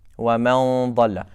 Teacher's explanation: it sounds heavy, because the back of the tongue is raised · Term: ikhfa